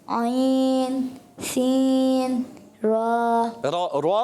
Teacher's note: عین سین را را ہونٹ گول نہیں کرے، را نہیں را، را یعنی موٹا بھی ہو جائے گا را اور ہونٹ گول بھی نہیں کرنے